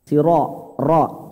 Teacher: Siratal ladzina an'amta 'alaihim. Nah, siro, ro-nya tebal Pak ya, karena berharokat fathah.